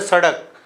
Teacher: उच्चारण करने पर जीवा झटके के साथ ऊपर से नीचे गिरती है और नीचे से ऊपर उठती है। ऐसे वर्ण उत्क्षिप्त वर्ण कहलाते हैं। इन वर्णों का प्रयोग केवल हिंदी भाषा में होता है।